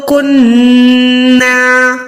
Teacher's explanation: نون کو ناک تک لے جائیں گے، 1 سیکنڈ ہولڈ کریں گے، 1 سیکنڈ روکیں گے ناک میں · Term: گننا کرنا